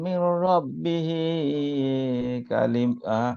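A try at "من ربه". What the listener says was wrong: মির রব্বিহি, হিতে একালিফ টান, আপনি টান দিতে খেয়াল থাকে না। মির রব্বিহি একালিফ, তো একালিফের বেশি তো দেয়া যাবে না।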